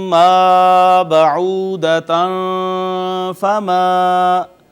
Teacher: مثلا ما بعودتا فما، یہاں بھی دیکھیے میم تھی، میم حروف یرملون میں سے میم بھی ہے، ادغام میں سے ما قبل آ گئی نون تنوین، تو نون جو تنوین کا تھا وہ میم نے اپنے اندر ضم کیا